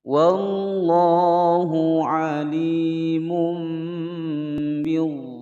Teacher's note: Wallah ada lafaz jalalah sebelumnya fathah dibaca tebal, dibaca panjang 2 ketukan.